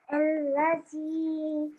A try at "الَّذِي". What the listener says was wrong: The. There's no buzz, there's no buzzing sound. It's a the sound. الذي.